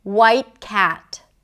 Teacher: I brought the tip of the tongue up and I blocked the air inside. When people hear that, they associate it with the T sound, a held T.